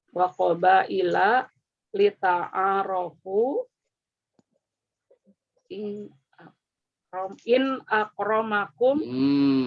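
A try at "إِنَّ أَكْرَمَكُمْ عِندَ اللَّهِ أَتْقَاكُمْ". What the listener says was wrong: Maksud in nggak boleh. Karena Nggak ada anna. Ayat Al-Quran nggak boleh, Bu. Inda itu dorof. Dorof kata sesudahnya itu harus majrur. Kata setelah inda.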